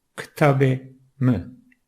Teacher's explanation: kelimelerde vurgu bu sesin yani E sesinin üzerindedir. Okurken bu sesin vurgulu okunması gerekir.